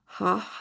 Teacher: हा हलक के दरमियानी हिस्से से निकलता है।